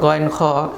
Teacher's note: এই 2টি হরফ উচ্চারিত হয় কণ্ঠনালীর শেষ অংশ থেকে, শেষ ভাগ থেকে। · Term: হরফে হালকি